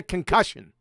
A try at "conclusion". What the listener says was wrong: He missed the L. It's conclusion.